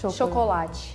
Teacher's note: we don't say cho at the beginning, we say sho. Chocolate. And the T then, it's like chi sound.